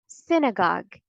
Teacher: The first syllable is stressed, sin, synagogue in American English